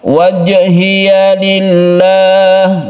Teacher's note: lillah ini lafaz Allah yang sebelumnya kasrah, kita baca tarqiq atau tipis. Lam jalalah itu namanya.